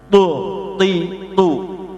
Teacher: Sekarang to ini ada tambahan sifat etbaq. Etbaq itu pinggiran lidah ke atas semua, ya. Maka to itu bentuknya lidah begini, tu ti tu, namanya etbaq, ya.